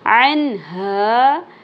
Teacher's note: یہاں پر اظہار ہوگا، نون ساکن کے بعد ہا آ گیا حروف حلقے میں سے